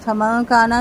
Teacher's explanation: نون ساکن کے بعد کاف ہے، باریک اخفا